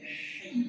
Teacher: jangan sampai terikut suara borok hi, tapi hai bersih dari suara borok